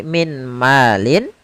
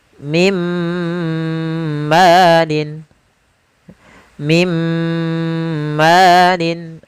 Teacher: Langsung dimasukkan ke huruf setelahnya dan ditahan suara gunnah pada huruf yang setelahnya. Kalau dia di huruf ya, ditahan di ya-nya. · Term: idgham bi gunnah